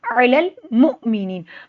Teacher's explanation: हमज़ा पे जज़म है तो यहाँ हम झटका देंगे। नी को लंबा करेंगे, जिस्म वाली या से पहले ज़ेर है, हरूफ मद्दे, एक अलिफ के बराबर लंबा होगा।